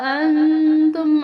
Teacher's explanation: انتم نون پر یہاں غنہ کیا جائے گا